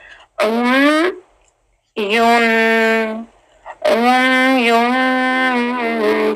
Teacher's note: आइन का मखरज गले के बिल्कुल सेंटर से